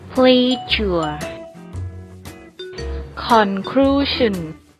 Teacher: zh is voiced, meaning you make a sound with the vocal cords